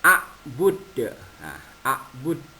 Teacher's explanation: Jadi qalqalah dipantulkan ya. Ini qalqalah kubra.